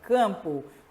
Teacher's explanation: o M, mais uma vez repetindo, ele tem a única função de nasalizar. Você não escuta o som do M, ele só nasaliza. Então, isso aqui eu tenho duas letras, então, AM forma um dígrafo vocálico.